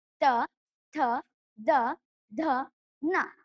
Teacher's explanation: ಹಲ್ಲುಗಳ ಬಳಿ ಹುಟ್ಟುವುದರಿಂದ ಅವು ದಂತ್ಯಾಕ್ಷರಗಳು